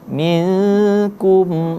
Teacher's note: minkum sama samar, nun mati bertemu dengan huruf kaf. Maka hukum bacaan menjadi ikhfa, samar-samar.